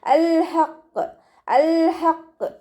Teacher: ഹ മഖ്റജ് വരുന്നത് തൊണ്ടയുടെ മധ്യഭാഗമാണ്. സൗണ്ടിനെ വ്യക്തമാക്കി ക്ലിയർ ആക്കിയിട്ട് തന്നെ ഉച്ചരിക്കുക.